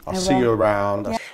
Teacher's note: it will sound more like see around I'll see you around the word u is reduced to Y in unstressed words